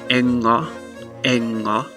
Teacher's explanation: it's kind of similar to the n-g sound in english except you don't have the g-stop sound it's just you hold out the nasal sound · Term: finnish ng sound